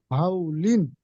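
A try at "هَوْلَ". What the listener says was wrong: লাম জাবার লা, লিন কেন পড়ছে?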